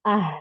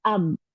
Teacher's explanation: huruf ha jauh ditenggorokan bawah jadi ee mengalirnya lama ibaratnya bensin itu butuh banyak dibanding huruf ba.